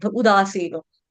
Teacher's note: सी दीर्घ है, दा दीर्घ है, नो दीर्घ है